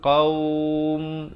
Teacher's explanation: Last sekali baru tutup rapat, menyempurnakan bunyi mim dengan kadar sekurang-kurangnya 2 harakat, 4 harakat ataupun 6 harakat.